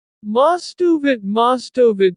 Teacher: we take the final consonant of the first word and attach it to the second word at the beginning · I'll link the V sound at the end of of to the I at the beginning of it · beginning so instead of most of it each word said separately it becomes most of it like one long word with no breaks in between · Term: linking